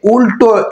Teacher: তাহলে ল এর এখানে উচ্চারণ দন্তমূল থেকে, কিন্তু উল্টো শব্দে উচ্চারণ করলে উল্টো এই ল কিন্তু আবার দন্তমূল থেকে উচ্চারিত হচ্ছে না, এটা হচ্ছে আমাদের মূর্ধা থেকে